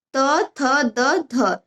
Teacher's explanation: ट ठ ड ढ ड़ और ये खटखोड़ ख। फिर दंत है यानी दांतों के मूल से इसमें त वर्ग आ जाएगा